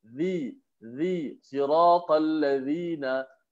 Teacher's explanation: huruf za makhrajnya di hujung lidah, dikeluarkan hujung lidah ke bawah, letak di bawah gigi atas kacip tu. Gigi kacip di bawah tu.